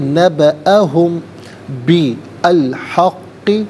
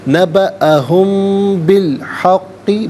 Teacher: نبأہم میں میم ساکن ہے، اس کے بعد با آ رہا ہے تو میم ساکن کو غننے کے ساتھ پڑھیں گے. نبأہم بالحق، با کے نیچے زیر، اسے الحق کے لام ساکن کے ساتھ ملائیں گے.